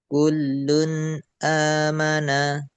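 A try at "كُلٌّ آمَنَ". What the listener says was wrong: Nah, kemudian jangan sampai terjeda ya. Kullun amana. Itu terjeda. Dari nun sukun itu nggak ada terjeda langsung ke a gitu. Kullun a kullun a.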